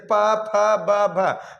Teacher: प फ बोलते समय होठ है जो एक दूसरे में क्या होती है, सटती है, इसीलिए इसको हम सब ओष्ठ से उच्चारण स्थान इसका बोलेंगे।